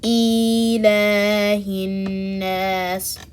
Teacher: Common mistakes here are not lengthening the alif after the lam, saying ilahi, stretching the kasra sound under the hamza